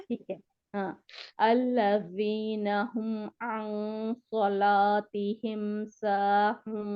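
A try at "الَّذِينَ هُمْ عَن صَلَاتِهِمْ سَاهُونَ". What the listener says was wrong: बहुत बेहतरी आई है, लेकिन आइन को मोटा नहीं करना। बारीक है ना ये। स्माइली आपका मुंह मुस्कुराने की शक्ल में हो।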